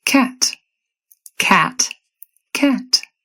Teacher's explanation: The vowel takes on a lower and more fronted tongue position.